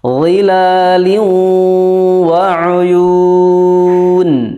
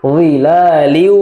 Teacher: Di sini tanwin bertemu waw, ya. Tanwin bertemu waw atau nun sukun bertemu waw itu dihukumi sebagai idgham bi gunnah. Jadi ada gunnahnya, ditahan 2 harokat.